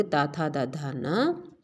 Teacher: ता था दा धा ना, ला और सा, इन वर्णों का उच्चारण स्थान दंत है